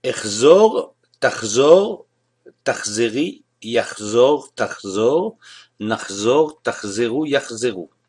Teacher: Pourquoi ce changement de vocalisation en AO? À cause du chet, qui est une gutturale. D'autres exemples qui se conjuguent comme l'achzor, l'achgog, fêter, célébrer, l'achlom, rêver, l'achshov, et l'achtom, qui veut dire signer.